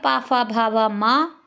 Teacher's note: ये ओष्ठ्य वर्ण होते हैं और इनका उच्चारण स्थान होता है ओष्ठ